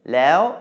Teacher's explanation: maito is now causing a high tone, lao, instead of a falling tone